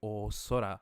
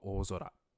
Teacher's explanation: rather than saying o sora, it glides faster if you go o zora.